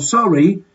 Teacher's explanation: just the word sorry but with a rising intonation